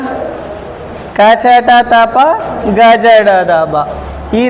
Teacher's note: అల్ప ప్రాణాలు అంటే కింద జటా లేకుండా ఒత్తి పలకకుండా మామూలుగా పలికే అక్షరాలను అల్ప ప్రాణాలు అంటారు